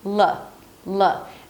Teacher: The L is a little heavy, so you want to engage the back of your tongue a bit. L, but don't make it too heavy.